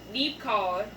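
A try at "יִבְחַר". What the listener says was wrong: Yib. You said leave. Yib card.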